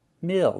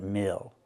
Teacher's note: Use the I sound plus the dark L. Mill, not mull, but mill.